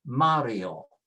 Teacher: Mario doesn't have an accent, and so it is pronounced with next to the last